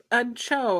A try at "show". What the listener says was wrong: That did not sound like you said show. It sounded like you said chode.